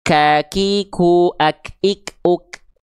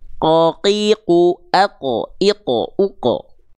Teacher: Karena kalau huruf kaf itu dia ada keluar percikan nafasnya.